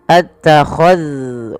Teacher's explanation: hati-hati di dalam melafalkan zal yang sukun, jangan sampai ia dipantulkan